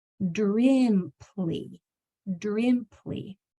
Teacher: That I is going to make the short I sound. It's really narrow. Your teeth are just barely apart. If you open your mouth a little more, it'll turn into that sound.